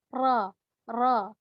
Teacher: ujung lidah ditempelkan di gusi atas